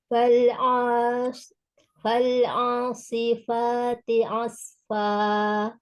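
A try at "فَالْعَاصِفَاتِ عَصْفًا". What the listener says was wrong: Yuk dilatih supaya ainnya nggak masuk ke hidung yuk. Fal'a, buka lagi di tenggorokannya, jangan terlalu ditekan tapi dibuka. Fal'a, fal'a, buka lagi rongga mulutnya juga buka. Fal'asi, pakai shot ya. Fal'asifati. Dari ain, ya, ain yang posisi dia di tengah tenggorokan, ya. Fal'a, sedangkan shot harus menebalkan.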